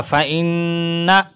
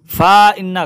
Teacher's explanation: فا زبر فا، حمزہ نون زیر ان، نون زبر نا، فإن، فا ان غلط ہو جائے گا، فإن غنہ کریں گے